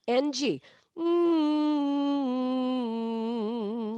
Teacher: NG is done on that peanut butter spot in the back of your mouth.